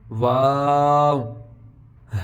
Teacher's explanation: شروع میں بھی ہونٹ گول ہوں گے اور آخر پہ بھی